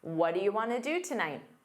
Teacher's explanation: want to becomes Wana in fast speech